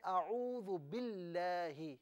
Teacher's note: جو اعوذ باللہ پڑھا نا، تو اس میں جو لفظ اللہ کی لام ہے نا، اس سے آپ باریک پڑھیں